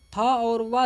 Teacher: दंतोष्ठ से उच्चारित होने वाला व्यंजन है